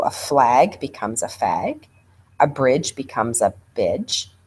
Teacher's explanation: You'll also hear kids delete R's and L's. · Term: cluster reduction